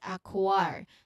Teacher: It's the K sound followed immediately by the rounded lips for the W sound. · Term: KW cluster